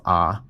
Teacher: the vowels in the words lot and thought for me are the same vowel when I pronounce them. They're both ah, but um, there are dialects east of the Mississippi that pronounce those as two different vowels. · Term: merger of lot and thought